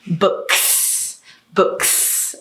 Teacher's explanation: that's a voiceless k that means we need to add a voiceless s there so it's books books okay here's one more and this one